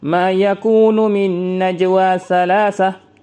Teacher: nun yang bertasydid dengan ukuran 2 harakah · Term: huruf gunnah